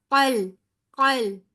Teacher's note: काफ मोटा हरूफे हल्क मुस्तालिया में से है, हर हाल में मोटा पड़ जाएगा।